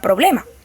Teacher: los demás los consonánticos según el punto de articulación puede ser labiales es decir que se pronuncian haciendo que los labios se toquen · cuando se pronuncia esta palabra, los labios se juntan por la ble y la ma